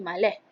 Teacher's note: konsonan frikatif S akan digantikan dengan konsonan frikatif H pada nodus koda di akhir perkataan. Perkataan tersebut akan menjadi maleh. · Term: penggantian konsonan